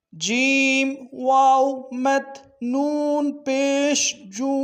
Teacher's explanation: یہ بھی وہی ترتیب ہے، واو کے اوپر مد ہے، واو کے مد کو نون کے جو شد ہے اس کے ساتھ ملانا ہے اور نون کے شد کے اوپر غنہ کرنا ہے، نون ساکن ہے۔